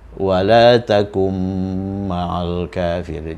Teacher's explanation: Ini nun sakinah, nun yang sudah sukun ketemu dengan mim, maka ini harus idghamkan